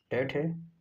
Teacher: अघोष ध्वनि के अंतर्गत 13 ध्वनियां आती है। वर्ग के पहले दो वर्ण और तीन उष्म व्यंजन जो है अघोष ध्वनि है